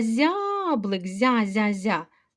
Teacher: з м'який оскільки поряд стоїть Я він передав свою м'якість